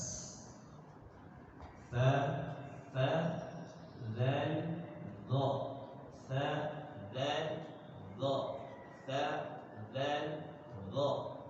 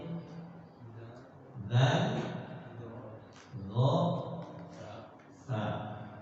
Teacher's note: Ketahan pada sisi makhraj. Baik, ujung lidah ketemu ujung gigi seri atas